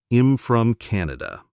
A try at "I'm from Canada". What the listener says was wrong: Almost. You stopped a little bit after im. Try to make it sticky. Am from Canada.